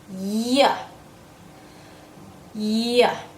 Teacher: my tongue is getting close to the top of my mouth but it does not touch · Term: Y sound